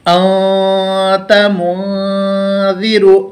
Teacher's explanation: زبان کو اوپر کے تالو پر نہیں لگانا ہے ان بول کے، بلکہ آواز منہ میں کھیلنا ہے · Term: اخفا